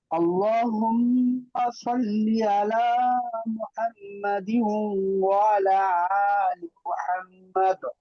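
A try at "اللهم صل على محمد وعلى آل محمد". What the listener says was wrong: এখানে একটু টান হবে এইযে এখানে খাড়া একটা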